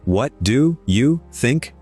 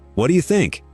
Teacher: Everything in the middle is squeezed to nothing. Do you almost vanishes. It becomes a tiny sound between 2 beats. It's still there, and it's not information.